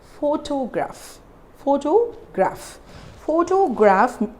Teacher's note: we are stressing on the first syllable